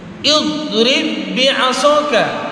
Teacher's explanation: Huruf do-nya dimoncongkan karena termasuk huruf isti'la.